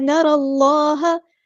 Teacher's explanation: را پہ زبر ہے تو پورا ادا کریں گے، ہیوی لیٹر ہے ، را کو ہم نے لام کے ساتھ ملا دینا ہے، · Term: حمزۃ الوصل ہمارا ڈراپ